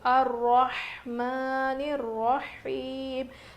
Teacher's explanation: ہا کی آواز بالکل ظاہر ہونی چاہیے، رو موٹا پڑھیں گے، کھڑا زبر ہے میم کے اوپر.